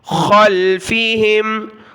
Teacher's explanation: خا کلرفل ہے، موٹا پڑھیں گے، گلے سے نکالیں گے